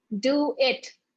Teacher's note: your D, do it, is pronounced just a little bit back on your palate